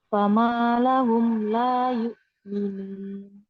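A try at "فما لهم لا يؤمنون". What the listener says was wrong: Ya. Tadi kasrohnya agak tercampur huruf e. Ya, sudah bagus.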